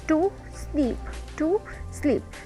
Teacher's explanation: So sleep is louder than to. So sleep is called strong syllable and to is called weak syllable.